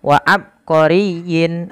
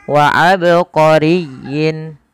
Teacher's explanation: tatkala kita membaca ba di sini harus dipantulkan kesalahan yang terjadi adalah tidak memantulkan huruf ba contoh wa abqorin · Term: Qalqalah